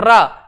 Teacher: प्रकंपित, क्योंकि जीव की टोन में कंपन होता है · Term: लुंठित व्यंजन